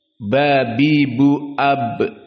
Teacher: dan ba makhrajnya dua bibir